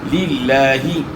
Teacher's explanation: لفظ اللہ کے نام سے پہلے زیر ہے، اس لیے لفظ اللہ کلام باریک ادا ہوگا۔